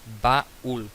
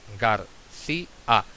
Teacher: También otros iatos formados por vocal cerrada tónica, es decir, cae el golpe de voz más vocal abierta átona. No cae el golpe de voz.